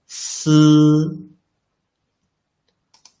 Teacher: your tongue tip will not touch the inner surface of the upper teeth all along, leaving a gap for the airflow to get through.